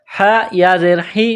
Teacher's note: گلے کے درمیان سے ہا کو نکالیں گے پڑھیں گے